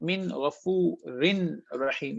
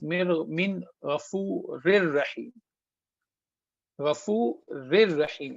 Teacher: So ra entered into ra, tanween is gone.